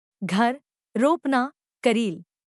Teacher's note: स्वतंत्र रूप से फड़फड़ती है तब ऐसी ध्वनि उत्पन्न होती है हिंदी में र ध्वनि सघोष अल्पप्राण वर्स्य लुंठित होती है